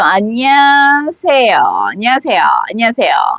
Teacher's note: Actually, it's 5 syllables, but it becomes more like 4 syllables.